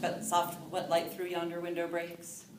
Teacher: it's the unstressed followed by a stressed